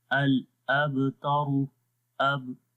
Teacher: آرام سے ضعیف آواز میں کلکلا ہوگا، کم کلکلا ہوگا